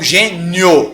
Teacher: Esse som está crescendo, saiu do I, que é fraco, e foi para o O, que é forte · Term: ditongo